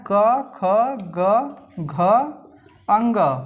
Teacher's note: जो क वर्ग का उच्चारण स्थान होता है वह कंठ होता है